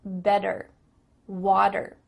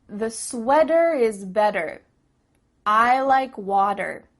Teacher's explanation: in American English a t that's between two vowel sounds it doesn't always have to be a vowel but between two vowel sounds is going to change to a d